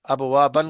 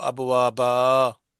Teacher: دو زبر، وقف میں ایک زبر اور بعد میں ایک الف پڑھا جائے گا۔ مثلا ابوابن کو ابوابا پڑھیں گے۔